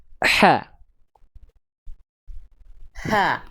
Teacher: H kecil itu dilafalkan ee dari tengah tenggorokan. Dia keluar karakter nafas yang berbisik.